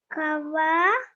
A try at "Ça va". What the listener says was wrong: Not ka, sa. Sava,